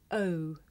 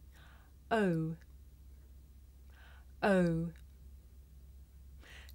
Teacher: The shape the mouth makes changes from the beginning of the sound to the end. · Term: diphthong